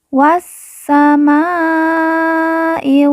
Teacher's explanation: Ma kita baca panjang lima harakat karena di atasnya terdapat tanda baca panjang lima harakat wassamaaiai W · Alif lam tidak dibaca. Po yang bertasydid kita baca ditekan dan ditahan 2 harokat. Kemudian po kita baca panjang 2 harokat karena di depannya terdapat huruf alif yang merupakan tanda baca panjang 2 harokat.